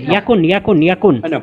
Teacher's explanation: ইয়ার মধ্যে কোনো টান হবে না, কোনো লম্বা হবে, ইয়াকুন ইয়াকুন ইয়াকুন।